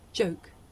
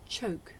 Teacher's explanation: the difference between the voiced sound that you hear at the beginning of the word joke and its voiceless partner that you hear at the beginning of the word choke